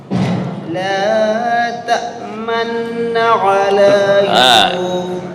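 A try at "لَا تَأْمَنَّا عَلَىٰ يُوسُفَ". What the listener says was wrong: Itu ismamnya kurang. Silahkan bibir saya dilihat. La ta'manna ala ya. Pas bunyi dilihat ya, diperhatikan. La ta'manna ala Yusuf. Bibir seolah-olah monyong membaca harokat dhammah, seolah-olah. Ya, tapi bukan membaca dhammah.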